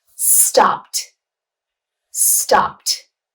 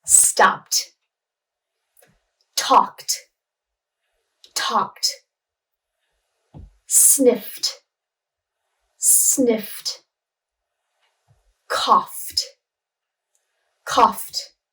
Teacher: even though the letters are ed on the ends of these words, it's pronounced t. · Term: t sound